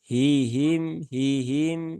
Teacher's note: semuanya huruf ha yang ada di pangkal tenggorokan bukan di tengah tenggorokan